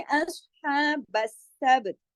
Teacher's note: हा के ऊपर खड़ी जबर है, एक अलिफ के बराबर खींचेगा